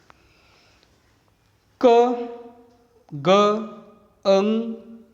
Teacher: When a sound is produced with the help of the back of the tongue and soft palate is called a velar sounds. K, G, Ng are velar sounds in English, and in it back of the tongue is active articulator and soft palate is a passive articulators.